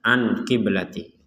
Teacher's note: nun sukun bertemu Q di sini kita harus membaca dengan samar jadi jangan dibaca jelas anqiblati kemudian selanjutnya ada di sini ada